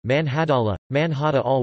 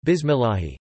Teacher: This heavy Lām is thus articulated with the entire body of the tongue rather than its tip alone.